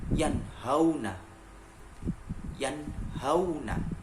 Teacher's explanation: ketika nun mati bertemu dengan huruf ha, dibacanya juga harus idhar atau jelas